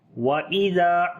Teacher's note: ذال کو نرم پڑھیں گے، الف مدہ ہے، لمبا بھی کریں گے.